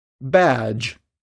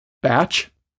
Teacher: vowel sounds before the j are typically longer than before its voiceless counterpart, the consonant sound ch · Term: vowel length rule